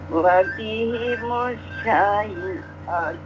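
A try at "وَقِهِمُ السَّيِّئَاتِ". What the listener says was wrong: Mat arifnya kurang. mata aritnya kurang. Qaf sama H pendek Ibu.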